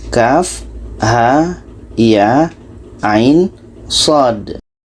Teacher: Kaf 6 harkat, ha dengan ya 2 harkat, ain dengan sod 6 harkat.